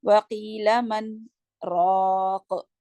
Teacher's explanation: پاز کریں گے من کے بعد، سانس نہیں لیں گے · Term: سخت